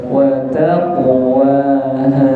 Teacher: wata tanya tertutup tipis, kemudian qafnya tebal.